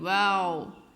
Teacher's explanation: دونوں ہونٹوں کو گول کرنے سے واو کی آواز آتی